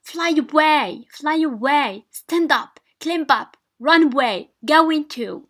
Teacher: Donc stress takes place in the preposition or the adverb.